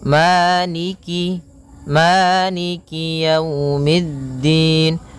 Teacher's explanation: Jadi kemudian kasrahnya juga disempurnakan. Jangan sampai dibaca dengan e tapi dia i